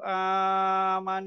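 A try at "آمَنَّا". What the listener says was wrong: আমান এখানে গুন্না হবে কিন্তু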